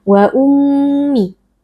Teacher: kita tahan sebentar dengan memasukkan suara ke dalam kisum atau ke dalam rongga hidung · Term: mim tasdid